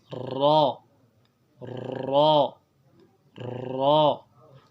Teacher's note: را کی ادائیگی میں ترتراہٹ جو ہے زبان میں پیدا کرنی ہے اور اس کو پر پڑھنا ہے